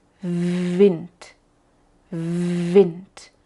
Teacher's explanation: la pronunciación es relacionarlo con la f lo que hacemos Es poner el labio inferior y los dientes superiores en la misma posición como para decirla F pero hacemos un poco menos presión y usamos la voz